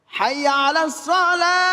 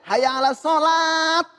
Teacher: ketika waqaf maka kembali kepada huruf H.